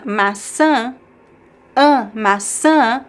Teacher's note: the stress goes all the way to the end. We do have a graphic accent on top of the last vowel, the tilde.